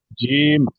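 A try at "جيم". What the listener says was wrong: জিম, আরো টান দিয়ে বলেন।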